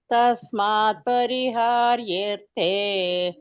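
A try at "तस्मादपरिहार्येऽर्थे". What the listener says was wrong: ತಸ್ಮಾತ್ ಅಪರಿಹಾರ್ಯತೆ ಮಾತಾಜಿ. ಇಲ್ಲ ತಸ್ಮಾದ್ ಅಪರಿಹಾರ್ಯತೆ ಅದು ಸೇರಿಸ್ಕೊಂಡು ಹೇಳ್ಬಿಡ್ಬೇಕು. ಇಲ್ಲಾದ್ರೆ ತಸ್ಮಾದ್ ಅಂತ ಬ್ರೇಕ್ ಕೊಟ್ರೆ ಅಪರಿಹಾರ್ಯತೆ ಅಂತ ಹೇಳ್ಬೇಕು. ಇಲ್ಲಾದ್ರೆ ಮೀನಿಂಗ್ ಚೇಂಜ್ ಆಗ್ಬಿಡುತ್ತೆ.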